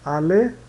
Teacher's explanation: No começo da palavra alemão, o H ele é gutural, né? É pronunciado que nem no inglês, verbo have, por exemplo.